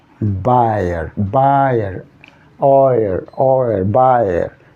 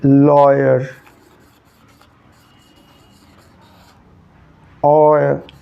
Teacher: Sendi buyer, sendi lawyer, oyer plus schwa, diphthong plus schwa, tripthong